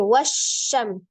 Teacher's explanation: Ada alhams, roghah ya, dialirkan suaranya wasya. Ada mim sukun bertemu dengan huruf sin, mim sukun bertemu dengan semua huruf kecuali mim dengan ba, dibacanya izhar safawi ya, dibaca dengan jelas, tetapi sifat huruf mim itu antara sidda dan roga. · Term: sifat tafasi